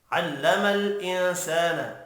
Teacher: نون ساکن کے بعد سین ہے، اخفاء حقیقی ہوگا، سا الف مدہ ہے، ایک الف کے برابر کھینچ کر بھی پڑھنا ہے۔